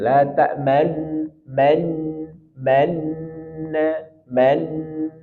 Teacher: jadi kita monyongkan bibir di nunnya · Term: ismam